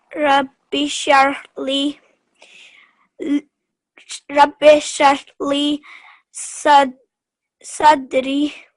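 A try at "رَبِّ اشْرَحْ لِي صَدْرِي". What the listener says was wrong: Just remember over here and over here, these are both examples of ya madda. So when we read them, we're going to prolong them for 2 seconds. Just a bit longer on the ya. Rabbi shrah li sadri.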